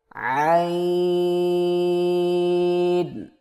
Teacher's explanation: زبان کی جڑ کو حلق کی طرف مضبوطی سے دباتے ہوئے باریک اور رگڑ کھاتی آواز میں پڑھیں